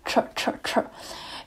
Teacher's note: to make this sound, first of all, you have to curl your tongue all the way back. So the tip of the tongue touches, you know, that ridge that comes out the top of your mouth. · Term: retroflexed T